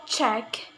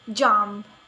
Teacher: This manner of articulation produces consonant sounds by blocking the airstream briefly with the tongue in the mouth, but is constructed with stop. The block airstream is suddenly not released, but is slowly released and causes audible friction sound. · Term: affricatives